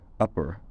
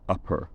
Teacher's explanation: American English speakers are more likely to have unaspirated plosives between a stressed and an unstressed vowel